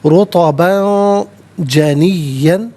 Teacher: رطباً، را پر پیش ہے، را کو پر کر کے پڑھا جائے گا، اور رطباً میں با پر 2 زبر کی تنوین ہے، تنوین کے بعد جیم حرف اخفا ہے، تو تنوین کو یہاں پر اخفا کے ساتھ پڑھیں گے۔ اخفا کہتے ہیں ناک میں آواز لے جا کر گنگنانا